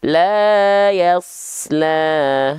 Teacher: jangan sampai kepanjangan. Cukup dilafalkan 2 harokat. Ya, diayunkan. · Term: mad tabi'i